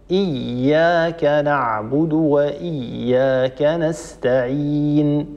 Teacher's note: الالف هنا لا تفخم لماذا لا تفخم لانها سبقت بحرف مرقق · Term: الألف